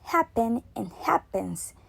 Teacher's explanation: The sound p and n become more similar to one another because they are spoken consecutively. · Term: assimilation